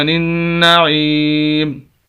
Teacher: وقف کریں گے، میم کو ساکن کر دیں گے، زیر ختم ہو جائے گی